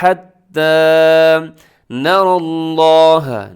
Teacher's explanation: न नून बारीक है, रॉ मोटा है, और आगे लफ्ज़ अल्लाह भी मोटा है, क्योंकि लफ्ज़ अल्लाह से पहले ज़बर आ गई है, तो ये लफ्ज़ अल्लाह पुर पढ़ा जाएगा, मोटा पढ़ा जाएगा।